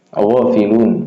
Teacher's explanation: Ghafilun, O-nya panjang, matobi'i.